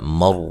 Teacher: را کو موٹا ادا کریں گے، را کے اوپر زبر ہے